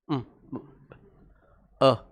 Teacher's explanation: मुंह खुला है, कितना? आधा खुला है, पूरा खुला नहीं।